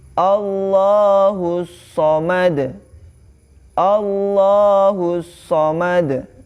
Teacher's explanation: ada alif lam syamsiah ya maka dia melebur ke huruf-huruf setelahnya · Nah, setelah huruf H di situ ada hamzah wasal, maka kaidahnya itu dibaca di huruf setelahnya ya, atau bisa dihukumi di sini ada alif lam syamsiyah ya, maka dia melebur ke huruf setelahnya